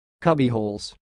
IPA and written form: ˈkʌbihoʊlz (cubbyhole's)